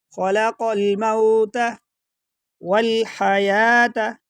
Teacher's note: خلق الموت، خا کو موٹا پڑھیں گے، قاف کو بھی موٹا پڑھا جائے گا، اور قاف اور لام کو دونوں کو ملائیں گے، بیچ میں سے الف کو حذف کر دیں گے